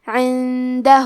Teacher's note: کلمت عندہ میں نون ساکن ہے پھر حرف الدال ہے. دال حروف الاخفاء میں سے ہے تو ہم یہ حکم کو غنہ کے ساتھ ادا کریں گے